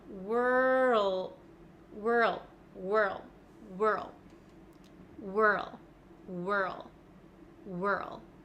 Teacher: I can feel my tongue sliding from the back to the front so from R to L · r okay so it happens almost immediately right w+ R then we go from an R to an L which I know is is difficult for a lot of you I can feel my tongue sliding from the back to the front